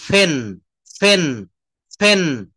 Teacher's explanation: মুখ থেকে একটু জোরে বাতাস প্রবাহিত হয় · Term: মহাপ্রাণ